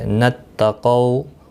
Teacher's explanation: قو واولین ہے، تھوڑا نرمی کے ساتھ کھینچ کر ادا کریں گے۔ قاف مستعلیہ ہے، پر پڑھا جائے گا۔